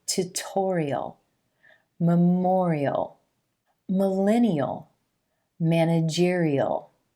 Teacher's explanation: The second way that you'll hear this suffix pronounced is eel, eel. We have the E as in green vowel sound rolling into that dark L